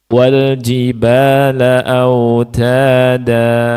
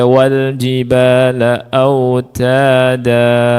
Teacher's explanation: Ini semua disebut mad iwad. Cara membacanya dipanjangkan dua harakat.